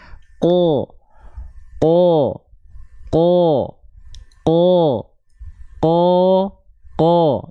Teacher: vokal o-nya itu dilafalkan dengan cara apa dengan cara mengangkat bagian pangkal lidah kita